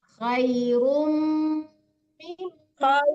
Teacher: Khairum mimma itu dua-duanya mim bertasdid dan didengungkan